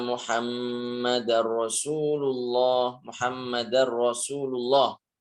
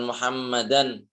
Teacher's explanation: Membacanya dileburkan nun sukun ke huruf lam atau ro setelahnya. Namun tanpa disertai dengan dengung. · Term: idgham bihair ghunah, idgham bila gunnah